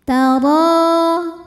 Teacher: Huruf ra dibunyikan secara tafkhim karena ra berharokat di atas yaitu harokatnya fathah. Maka cara bacanya ra panjang.